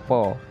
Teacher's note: हाँ तो हमारे लिप्स टच होते हैं इसमें, इसीलिए इसे ओष्ठ कहा जाता है